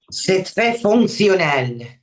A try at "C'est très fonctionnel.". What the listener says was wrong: Oui, c'est très fonctionnel. Très bien.